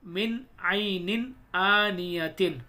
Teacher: دیکھیے یہاں پر 2 نون آ رہے ہیں تو دونوں جگہ ہم نون کو ظاہر کر کے پڑھیں گے، یہاں پر نون ساکن کے بعد عین آ رہا ہے تو یہاں پر بھی نون ظاہر کر کے پڑھا جائے گا، ناک میں نہیں چھپا کے نہیں پڑھا جائے گا